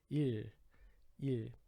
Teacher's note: Esse som do final aqui é uma mistura de R caipira com L, aquele L do espanhol, né? Fica meio que ir.